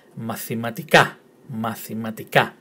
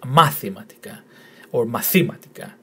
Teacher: The tone in the last syllable. So the emphasis in the pronunciation is in the last syllable